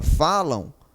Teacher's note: a letra m tem o som da vogal o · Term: ditongo